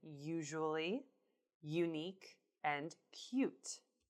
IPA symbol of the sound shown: j